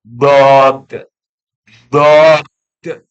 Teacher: terdorongnya lidah ke depan saat mengucapkan huruf yaitu huruf Dod mulai dari bagian belakang mulut hingga bagian depan sehingga ujung lidah menyentuh pangkal dua gigi dua gigi seri atas Hal ini dikarenakan pengaruh udara yang menekan dari belakang lidah huruf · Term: istitalah